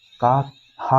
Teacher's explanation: का हा तो कंठ से बोलते हैं